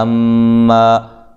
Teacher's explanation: मीम मुशद्दद पे गुन्ना ज़रूरी है